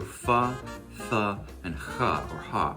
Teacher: they stopped cutting off the airflow for these sounds and let the airflow continue for a moment. These are what are called fricatives. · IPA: /f, θ, x|h/